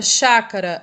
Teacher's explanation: a sílaba mais forte aquela que é pronunciada com mais intensidade de maneira mais demorada é o chá então o chá vai ser a sílaba tônica e o cá